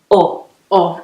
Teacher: it feels like it's made more in the throat there's more space in the mouth and the lips are slightly rounded